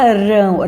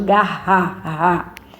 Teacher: Ó, se fala rão, ó, dá uma tremedinha na língua. E garra, o som é mais forte